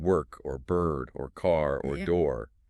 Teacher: Sounds like the vowel sound kind of merges with the R like in work or bird or car or door. The vowel isn't separate from the R. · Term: R controlled vowels, R-controlled vowels